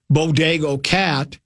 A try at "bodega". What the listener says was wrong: Why do you say Bodego? Isn't it Bodega? When we did the dictionary the other day, had an A on the end of it.